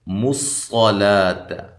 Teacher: صاد کو خوب موٹا کر کے پڑھنا ہے، لا کو باریک پڑھنا ہے، لام کو، اور الف مدہ کے قائم مقام ایک الف کی مقدار کے برابر لمبا کرنا ہے.